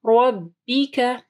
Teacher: را کو ہیوی پڑھنا ہے، را کے اوپر زبر ہے، با کے نیچے زیر ہے، رَبِّكَ اور کاف کو بھی نرم